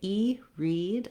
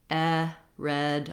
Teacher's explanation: It's more open and more lax. So when I say E, read, I'm high in front. Red, I'm more open and more lax.